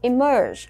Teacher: Mình nhấn vào cái âm thứ hai và nhớ là cái er ở đây mình cũng đọc nó thành âm ơ dài.